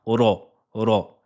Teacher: ce sera des lettres graves par exemple ici on dira pas re mais on dira ro ro